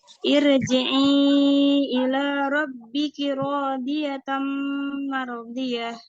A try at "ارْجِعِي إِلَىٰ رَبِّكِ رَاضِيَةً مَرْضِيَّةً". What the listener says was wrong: Mardiyah, ya-nya tasydid. B-nya pendek.